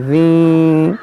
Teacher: यहाँ पर इदग़ाम करेंगे यानी गुन्ना करेंगे, नाक में आवाज़ जाएगी।